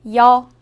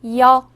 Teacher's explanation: 여는 먼저 이를 소리 내다가 바로 이어서 어를 소리 내며 발음합니다. 이와 어를 순서대로 빠르게 말해요.